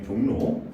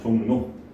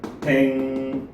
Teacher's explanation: 리을을 제외한 자음 뒤에 리을이 왔을 때 이 리을이 니은으로 변해가는 현상을 리을의 비음화 내지는 치조 비음화라고 합니다.